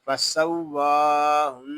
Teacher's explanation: فسواہن یہاں واو مشدد ہے، اور واو کو ایک الف تک کھینچ کر پڑھیں گے کیونکہ واو کے اوپر کھڑا زبر ہے۔ نون مشدد میں غنہ ہوگا کیونکہ نون مشدد میں ہمیشہ غنہ ہوتا ہے۔